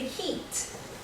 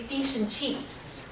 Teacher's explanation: Australians will say heat with a long e type sound